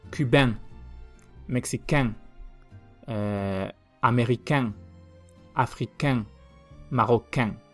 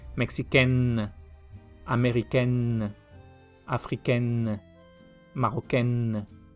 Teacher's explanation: La N ahí no sale larga. Y los femeninos se pronuncian casi igual, pero con una N más larga. Ya una N normal, por así decirlo.